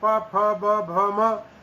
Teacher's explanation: प फ ब भ म दोनों ओष्ठों को चिपका करके और इन ध्वनियों का उच्चारण किया जा रहा है। इसलिए इन सब का उच्चारण स्थान दोनों ओष्ठ हैं, इसलिए ये ओष्ठ ध्वनियां कहलाती हैं।